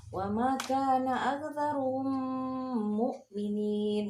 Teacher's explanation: Jadi mim mati ketemu mim tasdid, dilebur dan ditahan 2 harokat.